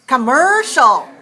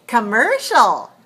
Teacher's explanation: commercial, which is also 3 syllables, but it's stressed on the second syllable. Then the first syllable is weak